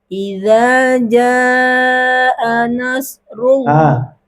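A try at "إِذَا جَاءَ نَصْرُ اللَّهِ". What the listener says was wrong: Nas bukan nas ya. Ini shad, nas. Itu ya. Nas. Gitu.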